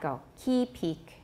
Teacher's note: don't put the stress on the second syllable keep the stress on the first syllable